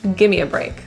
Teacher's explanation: The words give me get reduced to gimme.